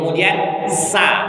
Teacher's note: Sa itu keluar desis angin di antara gigi-gigi